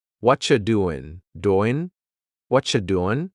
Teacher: the end of the word doing that g also gets cut out. What you doing?